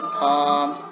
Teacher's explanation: Ini yang pertama T pada phonetic symbol penyebutan T dan N itu the tongue tip touch the ridge. Ya, jadi ujung lidah itu menyentuh ridge. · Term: alveolars